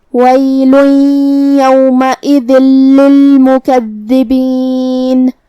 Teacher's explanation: کلمت للمکذبین میں یہاں حرف الدال پہ تشدید ہے، تو اس کا دھیان رہے، 2 حرف کے برابر ہم دال کو پڑھیں گے